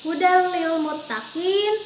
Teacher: Bila gunah itu artinya tanpa mendengung. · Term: idgham bila gunah